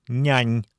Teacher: Они образуются между средней частью спинки языка и твердым небом. Акустически они звучат более мягко, чем соответственные русские.